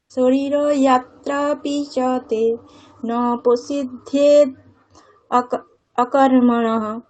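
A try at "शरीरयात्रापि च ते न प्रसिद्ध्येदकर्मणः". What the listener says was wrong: প্রসিদ্ধিয়ে দকর্মণঃ। অকর্মণঃ বললে হবে না, দকর্মণঃ বলতে হবে।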